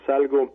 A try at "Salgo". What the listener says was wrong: Es Salgo, con acento en la O.